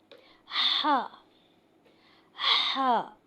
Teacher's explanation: यह हलक से अदा किया जाएगा। इसको अदा करते हुए आवाज और सांस बाहरी की तरफ अदा की जाएगी।